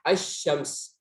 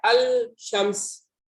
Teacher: Makanya lam itu diidghamkan ke shin. Langsung ke shin ya. Makanya di atas shin ada syaddah. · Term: lam syamsiyah